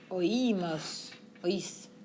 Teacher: We maintain our emphasis on the I.